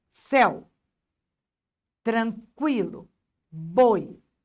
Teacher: na palavra céu, o e é vogal e o u é semivogal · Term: ditongo